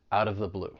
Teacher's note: I'm going to pronounce that T as a flap T. It's going to sound like a soft D. And then I will link it with the vowel sound in of. It's going to sound like out of the blue.